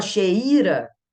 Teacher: Então, ele é ditongo decrescente, que veio forte, depois veio fraquinho, com o som caindo